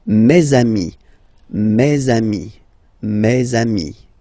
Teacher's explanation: let's be purist and make this beautiful liaison between these two words